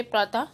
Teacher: इसका उच्चारण व्यंजन के बाद ह की तरह करते हैं, जैसे प्रातः ह की हल्की सी आवाज निकलती है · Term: विसर्ग